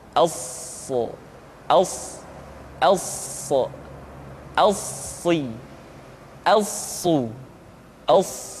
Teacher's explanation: Untuk memudahkan pengucapan huruf sa, Perhatikan sifat as-safir yang dimiliki oleh huruf sha, yaitu suara tambahan yang terdengar menyerupai dengan suara angsa